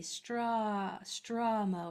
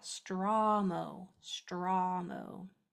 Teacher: It turned it almost into a schwa sound. So I need to drop my jaw so it's a clear ah